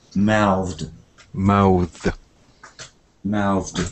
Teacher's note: There's a kind of th sound, like mouth, and then a d, mouthed.